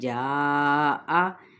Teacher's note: جاء اس کو 4 حرکت کھینچتے ہوئے حمزہ کو باریک ادا کریں گے